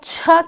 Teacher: जब आप छ कहते हैं तो हमारा जो टंग का फ्रंटल एरिया है वो पैलेटल, सॉफ्टल पैलेटल मतलब कि तालु को स्पर्श करता है, इसलिए वो तालव्य है।